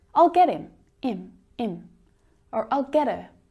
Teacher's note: him and her can often be reduced down as well so you don't hear the H sound